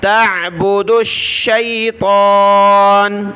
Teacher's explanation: दाल को मिलाया शीन के साथ